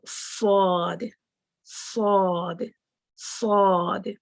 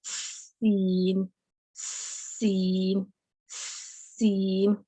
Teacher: صاد heavy sound ہے، سین اور زا کی جو ساؤنڈ ہے وہ لائٹ ہے